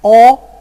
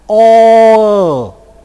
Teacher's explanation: first of all produce Cardinal six with rounded lips